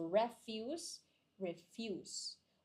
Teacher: the stressing is here in the second syllable if it's a verb, and then the stressing is in the first syllable if it's a noun